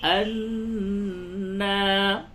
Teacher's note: نون مشدد ہے، اس پہ غنہ کرے